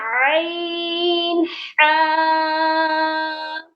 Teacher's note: یہ حلق کے سینٹر والے پارٹ سے پروناؤنس ہوتے ہیں، سینٹر والے حصے سے ادا کیے جاتے ہیں۔